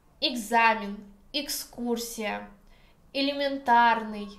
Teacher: unstressed e at the beginning of the word gives sound и.